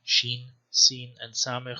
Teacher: phonetically or phonologically, S2 and S3, seen and samech, have merged